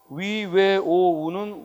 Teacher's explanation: 위, 왜, 오, 우는 원순 모음이다